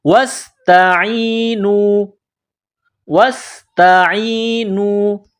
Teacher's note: واو کو سین کے ساتھ ملانا ہے، سین میں سیٹی کی آواز پیدا کرنی ہے. تا کو باریک کرنا ہے. · صاد میں سیٹی کی آواز پیدا کرنی ہے، صاد کو موٹا کرنا ہے